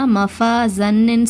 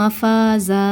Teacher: மஃபாஸான்னு 2 ஹரக்கத்து நீட்டி நிப்பாட்டணும் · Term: அலிஃப் மத்தா